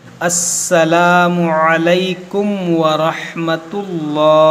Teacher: आइन को सही से अदा करेंगे और रा को मोटा करेंगे